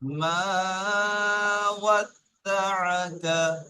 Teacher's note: এখানে ওয়াদ্দা আকার মধ্যে কোনো টান নেই, বুঝতে পেরেছেন, শুধু স্রেফ মাটা টান আছে। তাহলে ওয়াদ্দা আকারটা একটু স্পিডে বলতে হবে।